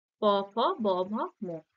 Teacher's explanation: সবগুলি ঠোঁট দুটো পরস্পরকে স্পর্শ করেই তবে উচ্চারিত হচ্ছে। হুম? তো যেহেতু এই এই প, ফ, ব, ভ, ম এই ৫টি ব্যঞ্জন ধ্বনি উচ্চারণের সময় ঠোঁট দুটি পরস্পরকে স্পর্শ করছে, তাই এই ধ্বনিগুলিকে ওষ্ঠধ্বনি বলা হয়।